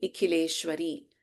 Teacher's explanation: In Nikhileshwari, Kha is Mahaprana.